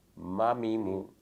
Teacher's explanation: میم کا مخرج ہے دونوں ہونٹوں کی خشکی والا حصہ، یعنی بیرونی حصہ، جب یہ ملتا ہے تو میم ادا ہوتا ہے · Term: شفویہ